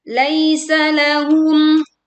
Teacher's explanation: Ketika Anda membaca Mim Sukun secara langsung, Mim Sukun dibaca dengan jelas dan tidak memantulkan bayangan.